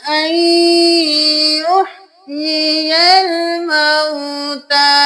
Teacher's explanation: حمزہ زبر نون ان، لیکن ہم یہاں پہ نون کو نہیں یا کو ملائیں گے. یہاں پہ ہم نون کو یا میں مدغم کر دیں گے